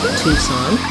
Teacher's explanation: It's a released T, aspirated